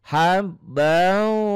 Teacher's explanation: Karena waw ini bagian dari idgham bi gunnah, maka bukan hanya nyamber dan double saja, tapi ada dengung ke hidung, ada ditahan karena ini bagian dari idgham bi gunnah. Jadi hab kalau ketemu ba kan nyamber dan double.